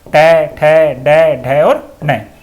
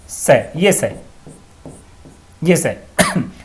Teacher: इसका उच्चारण स्थान है मूर्धा, इसलिए इस सै को मूर्धन्य सै भी कहा जाता है